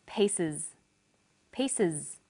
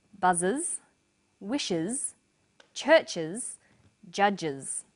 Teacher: The S on the end is pronounced z because it followed an S sound.